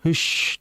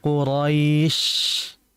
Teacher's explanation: syin ini hakikatnya dari segi pengucapan tempat dia di tengah lidah bukan di kedua bibir.